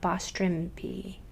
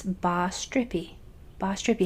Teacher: make sure that a vibrating M sound doesn't come in there